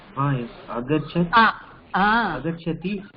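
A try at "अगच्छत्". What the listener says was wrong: அகச்சதாம் இல்ல, அகச்சதி இல்ல, அகச்சத் ஹலந்த் இருக்கு இல்லையா?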